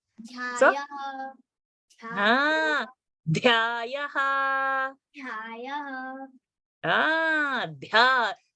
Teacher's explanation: So you will say athap, prathamo, dhyayaha. So dhya, when I'm saying, I'm feeling my air blast on my hand. So if you are not getting that air blast, keep it closer to your mouth and say th, dh. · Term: Mahaprana